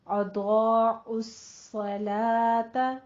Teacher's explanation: ضاد کو پر پڑھنا ہے، آگے الف ساتھ پر ہو جائے گا. اضاع عین جو ہے وہ وسط حلق سے نکلے گا، اور ساتھ ہی آپ نے صاد کی تشدید ادا کرتے ہوئے اس کو آپ نے پر پڑھنا ہے، لیکن آپ نے صلوتا نہیں کہنا.